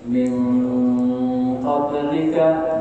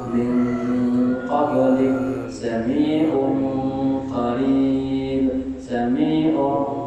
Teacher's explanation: Hurufnya dua, to dan ka. Nah ini baru ya khaisum, suaranya di antara hidung. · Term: ikhfa ab'ad